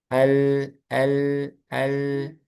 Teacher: Kalau lam itu bunyi hurufnya itu bunyi suaranya itu ke samping. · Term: inhirof